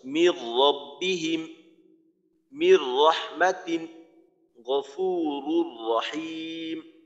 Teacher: এই যে বলা হইলো মিলাইয়া পড়তে হয়, তো এইখানে মিলটা এমন হবে যে কোনো নাকেও যাবে না আওয়াজ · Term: ঈদগামে বেলাগুন্নার